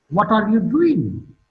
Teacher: Doing is marked with a falling tone.